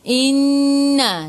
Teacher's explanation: Nun ada sabdu, tekan ke dalam nun dan dengung 2 harakat. Wajibul gunnah.